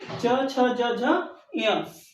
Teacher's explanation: ये तालु से बोले जाते हैं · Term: च वर्ग